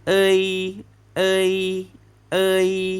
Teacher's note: ขึ้นต้นเสียงด้วยเออลงท้ายเสียงด้วยอี